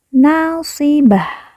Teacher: Ta marbutah di ujung apabila wakaf atau berhenti berubah menjadi ha sukun